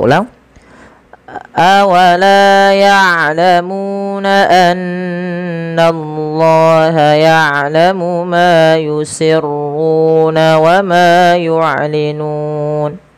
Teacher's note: kita boleh memanjangkan antara dua harakat empat harakat atau enam harakat karena dia ada baca Mat Arid di sukun yaitu matad yang terjadi di akhir bacaan kita disebabkan karena adanya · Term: Mad Arid di Sukun